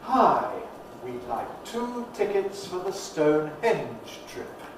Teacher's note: there's that happy vowel weak form of we